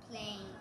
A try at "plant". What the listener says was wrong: There's no silent E.